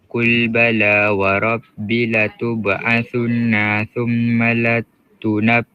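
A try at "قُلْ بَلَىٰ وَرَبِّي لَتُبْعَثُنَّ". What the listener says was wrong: Cuma minta maaf dia baca tadi warab sepatutnya warabbi tubunnah B tu ada mad asli kat situ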